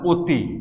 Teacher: এই যে ই আছে তার আগের যে অ, এটার উচ্চারণ হয়ে গেল ও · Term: সংবৃত উচ্চারণ